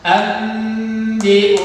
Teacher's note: yang tadinya an dibaca jadi am, karena di sini ada nun sukun bertemu dengan huruf ba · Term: iqlab